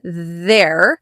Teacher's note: There is also th but there's a vibration in it. So, we call it a voiced th. But you should also see your tongue.